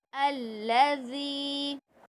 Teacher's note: पूरे ध्यान के साथ देखिए, दाल के नीचे ज़ेर है और उसके बाद या साकिन है, तो हम क्या करेंगे, या मद्दा है तो एक अलिफ की मकदार खींचेंगे